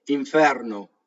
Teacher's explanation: You nasalize the N, your bottom lip smoothly transitions to the V or the F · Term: assimilation